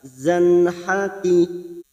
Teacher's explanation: fathah tanwin bertemu ha kita baca jelas